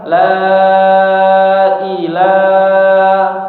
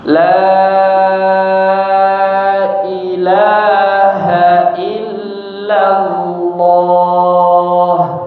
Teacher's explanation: Yang pertama lebih panjang ya. lebih panjang dua kali lipatnya atau lebih sedikit ya.